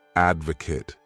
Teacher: This word has 3 syllables, and the stress is on that first syllable